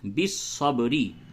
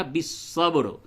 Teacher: جب آپ وقف کرتے ہیں تو را کے نیچے زیر کو ہٹا دیں گے